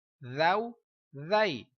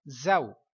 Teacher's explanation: ذال کو پڑھتے ہوئے آپ کی سیٹی کی آواز نہیں آئے گی